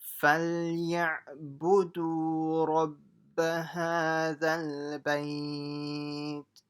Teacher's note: I've highlighted the ayn. So it's not فَلْيَعْبُدُوا with a hamza, it's with an ayn.